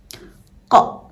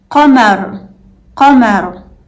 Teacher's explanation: This one might remind you of the K sound in English, but it's much deeper in your throat. It's made by pressing the back of your tongue against the soft part of the roof of your mouth. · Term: Qaf